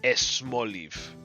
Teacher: Oh, here's another one. So I think if the word is S followed by a consonant, Spanish speakers will generally like to add an E to it. So this would be esmoliv, which is still not Spanish.